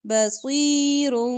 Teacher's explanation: نون کے رن میں جو نون کی آواز آ رہی ہے نا رن، وہ میم سے بدل کے پڑھنی ہے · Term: اقلاب